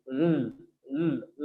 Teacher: Whenever we are going to produce l sound, so the tongue stays constantly at teeth ridge and the air is released from the both sides of the tongue very slowly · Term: lateral sound